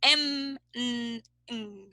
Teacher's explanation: these are called nasals because the air goes through the nose